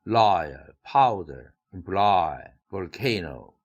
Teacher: 어떤 단어에서 imply, im도 있고 ploy도 있는데 이중모음이 있는 쪽에 액센트가 온 거죠. volcano도 vol도 있고 no도 있는데 가운데 이중모음 쪽에 액센트가 왔다는 사실을 관찰해 주기 바랍니다